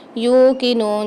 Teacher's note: یوقنون تو یہاں پر بھی ایک ایک الف مقدار کھینچ کے پڑھیں گے، یا کو بھی اور نون کو بھی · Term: واو مد